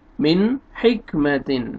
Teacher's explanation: میم زیر نون جزم، من، ہا زیر کاف جزم، حک، من حک، میم زبر ما، من حکمہ، تا دو زیر تن، من حکمتن۔ یہاں پہ آپ دیکھیں نون ساکن کے بعد حروف حلقی میں سے ہا آ رہا ہے، یہاں پہ اظہار کریں گے، جلدی پڑھیں گے